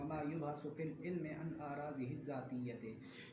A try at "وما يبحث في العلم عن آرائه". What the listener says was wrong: یہ ذات کیوں پڑھ رہا ہے؟ بہت پڑھا.